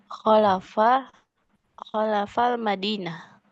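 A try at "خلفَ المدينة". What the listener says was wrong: Khalfa ya, disukunkan ya. Khalfal Madinah.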